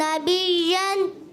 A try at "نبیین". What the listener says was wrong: نبیین. بش کی آواز نہیں ہے. نبیین.